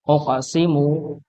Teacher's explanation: Dipantulkan sebagai tanda huruf yang dia memiliki sifat qalqalah atau memantul